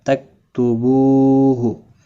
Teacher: बू वाव मद्दा है, एक अलिफ के बराबर खींच कर पढ़ेंगे